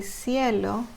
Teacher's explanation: when you say cielo, it's soft and you won't feel the vibration on the throat